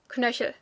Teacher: and you do pronounce it when you want to speak clearly most people in everyday speech will kind of skip the E · Most people in everyday speech will kind of skip the E, so the word kind of sounds more like Knöchel.